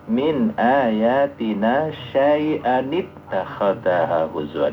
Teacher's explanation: Maka tanwinnya itu dihidupkan karena tanwin itu sama dengan nun mati, maka nun matinya dihidupkan, syai'annya jadi tidak bertanwin.